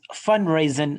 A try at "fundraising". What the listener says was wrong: Fund, not fun.